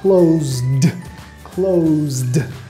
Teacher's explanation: Vas a mirar el sonido justamente antes de la terminación ED y si es un sonido con voz, quiere decir que tus cuerdas vocales están vibrando cuando lo hagas, vas a usar la pronunciación D